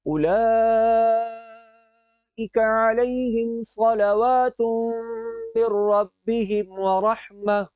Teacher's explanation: کیونکہ لام کے اوپر کھڑی حرکت بھی ہے اور مد متصل بھی، تو اس کی وجہ سے یہاں پر اولئک کی جو لام ہے اسے لمبا کیا جائے گا۔